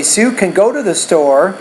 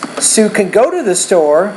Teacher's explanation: when can is positive, we want to put more stress on the main verb and not as much stress on that word.